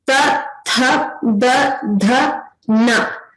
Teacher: So they come from the teeth region. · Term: dantya